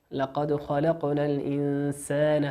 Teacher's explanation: في قوله الإنسان نون ساكنة أتى بعدها حرف السين، السين من حروف الإخفاء